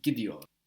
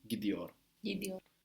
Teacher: The vowel softens the T. It softens the T and the T becomes a D. If you think about it, a D is just a soft T, really.